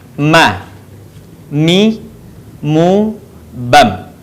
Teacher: Huruf mim atau ma dikeluarkan dengan cara merapatkan bibir kita.